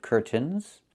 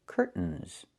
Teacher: It's curtains with a real T, curtains. Or I can use a stop T and say curt, stop the air, put the tongue up, curtains, and go directly to the N, curtains.